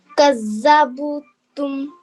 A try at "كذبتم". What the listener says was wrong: Now the ba here, what's this sign here? This is a sukun. Okay, so we need to join this dhal to this ba. So it would be kazzab. Make sure you work on the pronunciation of the dhal and the dad.